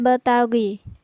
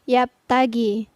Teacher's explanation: Yang pertama, untuk huruf ba, contohnya ya betagi. Jadi ada pantulan pada huruf ba. Jadi kurang tepat apabila kita membaca yaptagi, tapi yang benar adalah ya betagi.